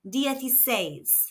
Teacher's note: There is an accent on the last syllable says. So we need to emphasize or stress this syllable. · The letter I makes an E sound in Spanish, and the C followed by an E or I makes a th sound